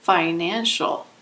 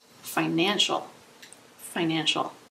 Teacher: Financial has three syllables. Emphasis is on the second syllable.